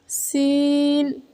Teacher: जुबान की नोक को सामने वाले नीचे के दो दांतों के किनारे से मजबूती से लगाकर बारीक और सीटी जैसी आवाज में पढ़ें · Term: सीन